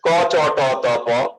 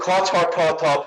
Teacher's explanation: যেমন ক চ ট ত প উচ্চারণ করেন, বাতাস কিন্তু লাগবে না, কিন্তু খ ছ ঠ থ ফ উচ্চারণ করেন, এখানে প্রচুর বাতাস পাচ্ছেন আপনি। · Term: অল্প প্রাণ